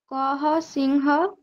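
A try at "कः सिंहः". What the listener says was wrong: সিংহ নয় সিংহা বিসর্গের উচ্চারণ তো হ এর মতই হবে তাই না সিংহা বলুন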